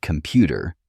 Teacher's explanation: in the word computer, the second syllable pu is stressed. When we speak, we naturally put more energy into these stressed syllables.